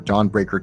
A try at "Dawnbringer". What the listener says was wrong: Dawnbringer, not breaker, bringer.